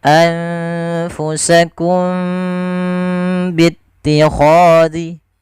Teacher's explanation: cara membacanya suara mimnya harus ditahan tidak sebagaimana izhar yang tidak boleh ditahan suara mimnya maka di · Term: ikhfa syafawi